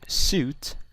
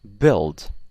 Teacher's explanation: So suit, you see your lips go forward a little bit, or you could say build. Your mouth goes back a little bit.